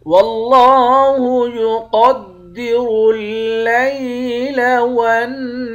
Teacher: لفظ اللہ کے لام کو موٹا پڑھیں گے، لفظ اللہ کے لام کے اوپر کھڑا زبر ہے، ایک الف کے مقدار کھینچ کر پڑھیں گے۔ · قاف اور را ان دونوں حروف کو موٹا پڑھیں گے، نون مشدد پر غنہ کریں گے، ہا کے بعد الف ہے، الف حروف مدہ ہے، ایک الف کی مقدار کھینچ کر پڑھیں گے، آخر میں را ساکن ہے، اس را کو موٹا پڑھیں گے